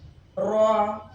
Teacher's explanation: را اپنے مخرج میں تھرا کر ٹھہر جاتی ہے